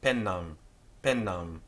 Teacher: the M on the end of the Latin word simply nasalizes the final vowel